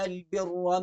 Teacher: بر کی یہ را موٹی پڑھی جائے گی